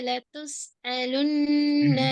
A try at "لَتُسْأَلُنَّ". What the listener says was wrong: لَتُسْأَلُنَّ சும்மா நார்மலா சொல்லுங்க பாப்போம். நீங்க நீங்க தொண்டையில நடுவுதான் உங்களுக்கு போறீங்க. நார்மலா முன்னுக்கு கொண்டு வாங்க.